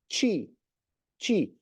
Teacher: É como se tivesse um T saindo e depois sai um chi.